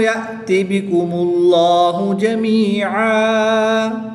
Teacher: جلالت اللہ عز و جل کے لام سے پہلے حرف پر پیش ہے تو اس لیے اس لام کو پر یعنی موٹا پڑھیں گے